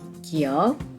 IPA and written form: kijʌk (giyeok)